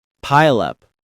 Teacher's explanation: It's two syllables. Pile up. The stress is on the first syllable.